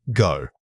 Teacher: When giving commands or making definitive statements, keep the tone stable and allow it to drop slightly. This falling pattern is authoritative and signals that no further input is needed.